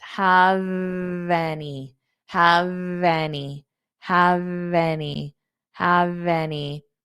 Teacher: I hold the V sound out.